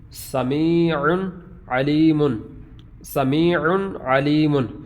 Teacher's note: سمیع بالکل آواز واضح ہے، علیم آواز واضح ہے کیونکہ تنوین کے بعد عین حروف حلقی میں سے ہے۔ یہ دو زبر کی تنوین کے بعد، دو پیش کی تنوین کے بعد، دو زیر کی تنوین کے بعد یہ آگے والے حروف جو ہیں یہ حروف حلقی میں سے ہیں۔